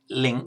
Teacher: On its own, it's written as an NG, but with a K following, your tongue automatically puts itself in the right position to pronounce it as a ng. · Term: ng sound